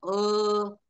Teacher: अ म्हणून बघा तुम्हाला स्पर्श जाणवेल हवेचा कंठा मध्ये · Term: कंठ्य